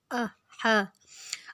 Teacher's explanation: اب دیکھیں آ کو ہم نے نہیں کھینچا، حا کو ہم نے حلق سے نکالنا ہے